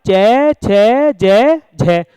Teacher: इनके उच्चारण में ऊष्म या संघर्षी व्यंजनों की भांति संघर्ष होता है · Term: स्पर्श संघर्षी व्यंजन